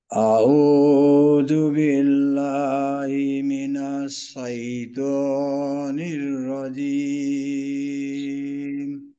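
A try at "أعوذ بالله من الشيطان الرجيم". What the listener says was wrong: উচ্চারণটা কিছুটা কিন্তু সিনশিন মিশ্রিত।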